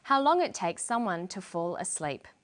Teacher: for the very last item in the list, how long it takes someone to fall asleep. She uses falling intonation. This is how we know the list is finished.